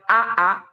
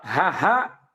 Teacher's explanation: kalau Hamzah Aa dia tidak mengeluarkan napas · Kalau hamzah yaitu dia jahar tidak mengeluarkan napas ketika diucapkan, sedangkan kalau ha dia mengeluarkan napas ketika diucapkan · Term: jahr